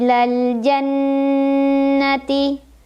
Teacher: cara membacanya didengungkan ditahan kurang lebih dua harokat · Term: ghunnah musyaddadah